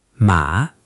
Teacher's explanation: The dipping third tone